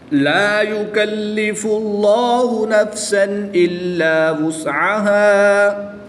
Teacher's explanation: الف مدہ کو وقف میں تبدیل نہیں کریں گے بلکہ 1 الف یعنی 2 حرکات کے برابر ہی پڑھیں گے